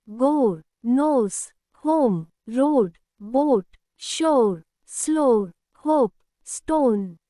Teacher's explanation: రెండు long ఓ, ఓ. Rule: when O comes before a silent E or joins with OA or O, it becomes a long round sound like O. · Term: long O sound